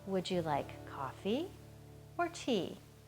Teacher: Now, I'm not sure if you could have heard that, but I did a kind of upward intonation on coffee and a downward intonation on tea.